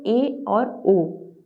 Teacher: जिन स्वरों के उच्चारण में जिह्वा की जो ऊंचाई है वो समृद्ध स्वर की तुलना में कम होती है, उन्हें अर्ध समृद्ध स्वर कहते हैं। और अर्ध समृद्ध के अंतर्गत जो स्वर हैं वो 2 ही आते हैं, वो होते हैं ए और ओ।